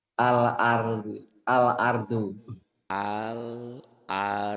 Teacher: Alif lam tersebut dibaca terang jelas berbunyi L, L. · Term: alif lam qamariyah